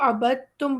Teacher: اس لفظ کو ابد تم پڑھیں گے، دال کو ہم ادا نہیں کریں گے